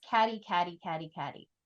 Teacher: in Caddy uh I'm not feeling a t or a d I'm feeling something kind of in between